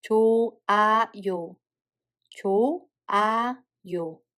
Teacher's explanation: As you just heard, there is no H sound between 조 and A. If there is a H sound Batchim followed by a syllable that starts with a circle like this, the H sound becomes a mute.